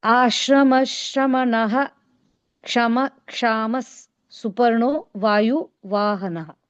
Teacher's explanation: that ha sound has to come because there's a visarga there, and the visarga sound has to come because ksha is coming later.